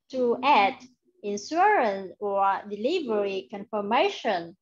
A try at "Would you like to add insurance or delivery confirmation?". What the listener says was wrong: Chữ you, em hay đọc là bị lướt lắm này. Do you like to add insurance? Sau insurance có âm S. Delivery confirmation.